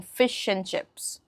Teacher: You're dropping the d in and and you're saying fish and chips.